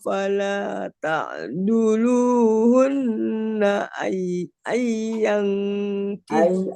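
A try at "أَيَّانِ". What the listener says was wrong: Ai-nya kurang ditahan.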